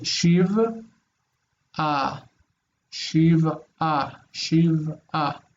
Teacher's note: the ayin is basically silent. It's breaking up the syllables.